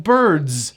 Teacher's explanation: Notice the S is pronounced as a Z. Birds. It's voiced.